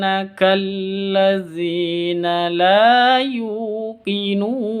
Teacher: la panjang dua harakat dua ketuk karena ada Alif diawali dengan fathah